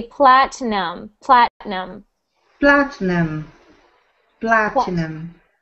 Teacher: we pronounce that word with no i sound we ignore the i we don't pronounce it